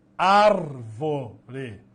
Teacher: antepenúltima sílaba mais forte